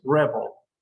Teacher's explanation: And in the other one, that is exactly spelled in that way, the intonation or the stress syllable is not at the end, it's at the beginning. It's rebel.